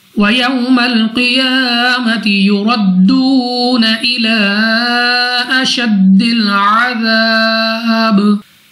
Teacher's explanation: वाव साकिन से पहले जबर वावलीन बगैर खींचे पढ़ेंगे